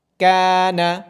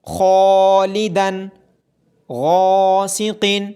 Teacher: یہاں پہ قوف ایک موٹا حرف ہے جس کی وجہ سے الف کو بھی موٹا پڑھا جا رہا ہے۔ اس الف کو پر پڑھنے کو تفخیم کہا جاتا ہے۔